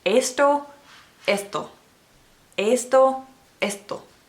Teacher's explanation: The T is not an enunciated T sound. In Spanish, it's more like a DTH maybe. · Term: softer T sound